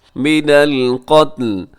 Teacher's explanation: را موٹا پڑا جائے گا، من القتلی لکھا ہوا ہے لیکن وقف کریں گے تو آخر میں لام کو ساکن کر دیں گے